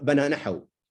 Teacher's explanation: with the pronoun we cut the a.